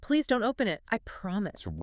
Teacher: Notice how the emphasis lands on the action words.